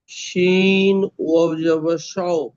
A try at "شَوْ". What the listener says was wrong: ওয়াওটি টানেন। ওয়াও।